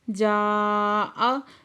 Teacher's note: جاء مد متصل ہے، 5 سے 6 حرکت کھینچ کے پڑھیں گے۔